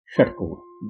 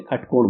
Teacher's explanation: बिहार के कई हिस्सों में इसे ख बोला जाता है, इसे खटकोण बोलते हैं।